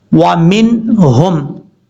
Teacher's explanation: یہاں پر اظہار کریں گے تو پھر نون کو ظاہر کر کے پڑھیں گے. نون کی آواز ناک میں نہیں جائے گی